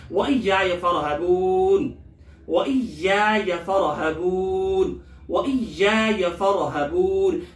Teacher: یا کو سختی سے پڑھیں گے تھوڑا سا روک کر، فرحبون بھی را کو موٹا پڑھیں گے، اور اس کے بعد جو ہے حبون یہاں مد عارض وقفی ہے۔